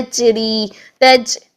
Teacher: یہ چ کی آواز آنا شروع ہو جاتی ہے، جس کی وجہ سے جیم میں جہر کی بجائے ہمس پیدا ہو جاتی ہے اور اس کی شدت بھی چھوٹ جاتی ہے.